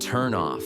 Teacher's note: the N in turn jumps right to the O in off. It's like one word, turn off.